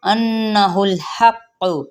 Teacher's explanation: پہلے تشدید قاف ہے پھر پیش کے ساتھ پڑھیں گے